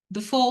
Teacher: Before, this R is not pronounced.